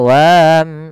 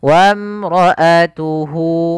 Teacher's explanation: Kemudian pada lafal wamra'atuhu, di sini alifnya tidak dibaca, tidak boleh kita baca wam, enggak, tapi langsung saja ke huruf mim yang mana alif dianggap tidak ada